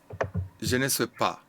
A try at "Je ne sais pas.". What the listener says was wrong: Très bien.